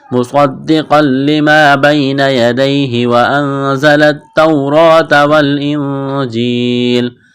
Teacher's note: صاد کو موٹا کرنا ہے، صاد میں سیٹی کی آواز پیدا کریں گے